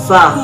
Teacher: hamas, yaitu berdesis atau nafas berhembus. · Makhorijul huruf sa terletak pada punggung ujung lidah dan ujung dua gigi seri yang atas. Sedangkan sifatul huruf sa terdiri dari 5 sifat.